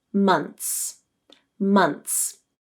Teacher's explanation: Many native speakers will drop the TH sound because it occurs between a consonant and a final S in order to make their speech more fluent.